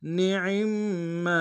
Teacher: میم کے تشدید زور دیں گے، میم کے ساتھ الف مد ایک انداز میں کھینچیں گے